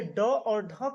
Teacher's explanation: उत्क्षिप्त व्यंजन में ड और ढ का जब उच्चारण करते हैं तो जीभ बाहर की तरफ फेंकी जाती है।